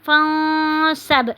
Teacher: اب فَإِذَا پہ الف مدہ ہو رہی ہے، فَرَغْتَ فَانصَبْ پہ نون ساکن کے بعد حرف صاد آ رہا ہے، تو یہاں پہ ہم نے کیا کرنا ہے، اخفا کرنا ہے، آواز کو ناک میں چھپانا ہے